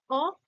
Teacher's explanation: অ জীবটা পেছনের দিকে পিছিয়ে যাচ্ছে তাই এটাকে কি বলা হবে পশ্চাৎ পশ্চাৎ স্বরজনী এবং জীভের ওই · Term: পশ্চাৎ স্বরধ্বনি